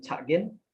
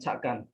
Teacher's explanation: There are some phoneme changes from close mid front unrounded vowel to open front unrounded a in the future tense